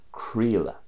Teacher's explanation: there's a bit of an E sound there, just in the third and fourth letters there, creala. It's still spelled the same way, but the E sound is quite evident there. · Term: western way